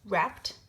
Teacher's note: Notice how the ed makes a t sound even though it's spelled ed.